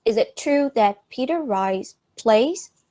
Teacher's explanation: the last word of the questions, plays, is in a rising tone.